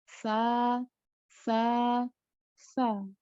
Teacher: Nah, sa kalau kita ucapnya benar maka dia tidak tertahan, jadi tidak kuat seperti syiddah, juga tidak tawassut juga, tidak agak lemah tapi benar-benar lemah. Karena huruf sa misalnya salah satu huruf yang memiliki sifat rikhawah itu sa benar-benar mengalir. Jadi ada hamsnya juga.